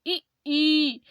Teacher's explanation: जितनी हो सके तो हमें जीभ को क्या ऊपर उठाना चाहिए, यानी कि तालू में टच नहीं करनी चाहिए बल्कि ऊपर उठानी। जब हम ई का उच्चारण करते हैं तो हमारी जीभ एकदम से टाइट हो जाती है और ऊपर के लिए जाती है, लेकिन तालू में टच नहीं होती। बोल करके देखेंगे ई, तो इससे क्या हुआ, हमारी जीभ जो है एकदम टाइट होकर के लिए ऊपर के लिए गई लेकिन टच नहीं हुई। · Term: ऊंचा स्वर